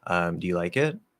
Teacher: we have this sort of rising, I like to say, a little question curl at the end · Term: question intonation